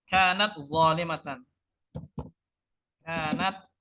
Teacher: ta makhrajnya ujung lidah di pangkal gigi seri atas